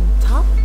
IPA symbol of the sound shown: t